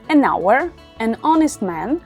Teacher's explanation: Aquí tenemos la H al principio, pero la H no se pronuncia